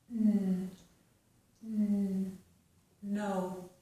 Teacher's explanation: So we are putting the tongue on the ridge behind our teeth, and it is touching, it pushes against the ridge, and we stop the air from coming out that way. So my tongue is up, touching the ridge, and I force the air through my nose. And it gives us no. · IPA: / n /